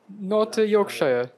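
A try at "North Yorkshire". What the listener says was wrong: It is यॉर्कशायर actually. जितने भी इस तरह के लफ्ज आते हैं उसमें ये लॉन्ग आई नहीं बोला जाता, शॉर्ट आई बन जाता है. सो यॉर्कशायर, ऑक्सफोर्डशायर, हैम्पशायर.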